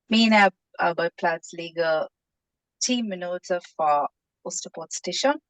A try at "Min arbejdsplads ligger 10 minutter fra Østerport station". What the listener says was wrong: Much better. Give me an S on arbejdsplads.